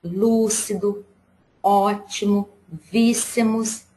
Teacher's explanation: o acento agudo é o som mais aberto